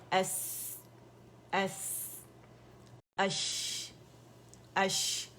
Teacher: یہ شاورنگ ساؤنڈ ہے، تفشی کہا جاتا ہے اسے